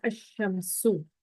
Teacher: لام سائلنٹ ہو گیا تو جو اب اس کے بعد میں آنا والا حرف ہے نا اس پہ تشدید آ جائے گی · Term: شمسی حروف